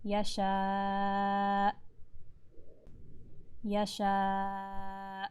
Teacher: Notice that I'm not going to let out a puff of air after I say the Hamza sound. So you don't want to say yasha, yasha, and let out that Hamza.